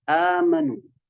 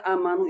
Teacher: untuk riwayat Hafiz dia membaca 2 harokat mat badal, amanu. Tapi ada riwayat yang lain dari Warash misalnya, itu membaca amanu itu sampai 6 harokat